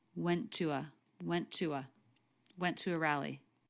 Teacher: they're connected with just a single true t sound so you don't need to make two t's here we link them together